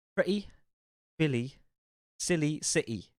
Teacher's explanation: if a word ends with a y we will hear an e sound however in the geordie accent this will be shorter